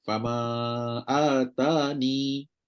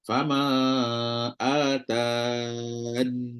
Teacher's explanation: Pertama, kekalkan ya, berhenti 2 harakat.